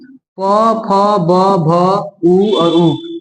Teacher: इसको बिना ओठ की सहायता से आप बोल नहीं सकते। अगर हम बोले कि बिना ओठ को टच किए प बोलिए, संभव नहीं है, प्रैक्टिस कर सकते हैं।